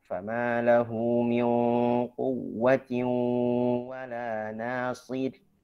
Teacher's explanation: Di situ yang tebal hanya huruf shad. Ra dia tarqib. Kenapa? Karena dia sebelumnya kasrah.